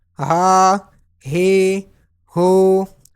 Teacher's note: Ha is pronounced from bottom part of throat. Ha, khada zabar ha, ha, khada zir he, ha, ulta pesh hu, ha, he, hu.